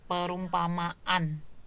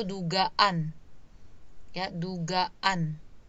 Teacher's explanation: fonem akhir dari kata dasarnya itu a, kemudian sufiksnya a, maka jadi ada kayak jeda sedikit, yaitu glottal stop